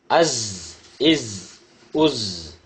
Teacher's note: இரு பற்களையும் சேர்க்கக்கூடாது நுனி நாக்கு முன் பற்களின் நடுவில் இருக்க வேண்டும் குரல் அழுத்தமாக ஒளிக்க வேண்டும் குரல் விசில் ஓசையுடன் ஒளிக்க வேண்டும்.